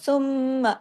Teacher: double मीम है ना आवाज नाक में छुपी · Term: गुना